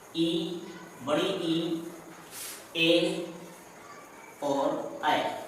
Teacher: अग्र स्वर वह स्वर होते हैं जिनके उच्चारण करते समय जीभ का अगला भाग प्रयोग में आता है